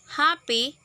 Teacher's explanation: in all these sounds both lips are coming together